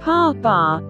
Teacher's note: Bilabials, pa, ba, and are produced by closing the lips together to restrict the air from flowing freely out of your lips